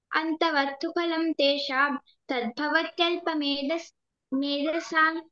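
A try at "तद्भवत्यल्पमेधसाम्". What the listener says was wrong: సామ్, ఇందాక సాన్ అన్నావు, సామ్ అది ఎం సౌండ్ రావాలి.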